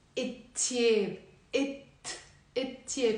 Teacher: So the l sound disappears.